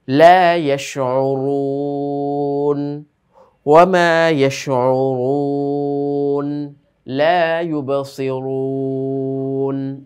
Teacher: যখন পেশ আসলো, পেশ আসার কারণে এই রটাকেও মোটা করে পড়তে হলো। তো পেশে তো ঠোঁটটা গোল হয় এবং উচ্চারণটাও মোটা হয়। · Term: র মোটা